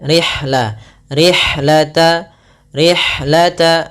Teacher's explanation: Kemudian "rih", hembuskan napas untuk huruf ha karena ha memiliki karakteristik yang disebut Hams.